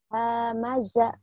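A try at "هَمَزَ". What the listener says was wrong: Hamaza. Enggak ada yang panjang.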